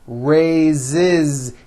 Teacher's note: spelled with an S, it's pronounced with a voiced Z. Raise. So we say I raise with a voiced Z ending, and he raises.